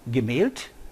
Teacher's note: this matches the German principles of final devoicing